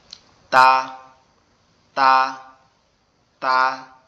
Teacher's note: দুই দাঁতের আগার গোড়ার সঙ্গে লাগবে, আগার গোড়ার সঙ্গে লেগে উচ্চারিত হবে তা, তা, তা।